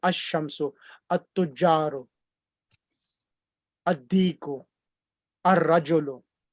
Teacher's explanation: It joins on together, and the lam becomes silent.